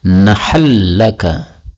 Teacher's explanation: ini nun ketemu dengan lam, ini boleh idgham menjadi nahal laka